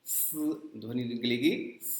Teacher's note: पढ़ते समय जो जुबान है ऊपर के दांतों से जाकर सट जाती है और वहां से धीरे से हवा निकालते हैं, दांतों को रगड़ते हुए हवा निकलती है, स ध्वनि निकलेगी स।